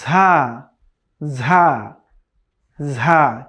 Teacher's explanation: জিহ্বার আগা সামনের নিচের দুই দাঁতের পেট ও আগার সাথে লাগিয়ে উচ্চারিত হবে 3টি লেটার, আর সেটি হচ্ছে সদ সিন ঝা।